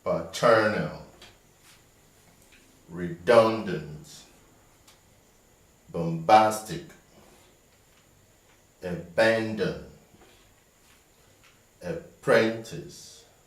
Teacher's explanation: all these trisyllabic words have their stress on the second syllable